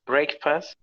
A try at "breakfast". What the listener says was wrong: It's not incorrect. People will understand. But if you go to listen to the sound, you see that it doesn't sound like a sound like break. It sounds like breakfast. But they will understand you.